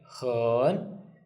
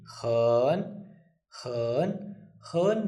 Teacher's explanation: Hen, it's a third tone. Hen, third tone means we start high, we go down, and then we go up again.